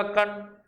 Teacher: ध्वनि नाक से भी निकलेगी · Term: अनुनासिक